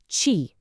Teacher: press the middle part of your tongue, the blade, up against the roof of your mouth, your hard palate, kind of smile, and then push out a sharp puff of air. Think of the qī in cheese, but with more force and more air. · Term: Pinyin Q